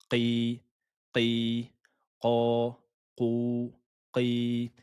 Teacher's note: Et attention, le i, il faut le prononcer de façon grave. Gonfler l'arrière de la langue. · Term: Qaf